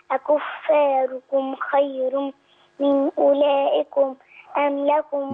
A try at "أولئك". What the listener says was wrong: من أولئك؟ عندنا في مد هنا متصل، مدي.